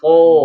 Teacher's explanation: Nah, kayak gitu tuh pangkal lidahnya huruf sod. Ujung lidahnya mah berhadapan dengan gigi seri. Tapi pangkal lidahnya dinaikin ya. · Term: isti'la